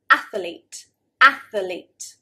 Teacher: So there should be 2 syllables, athlete, athlete. Many native speakers will actually say athlete, athlete, adding another syllable.